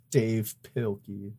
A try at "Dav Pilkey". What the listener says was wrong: But it's just DAV. There's no E.